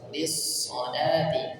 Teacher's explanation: Jadi perpindahannya langsung shadnya terbaca tebal.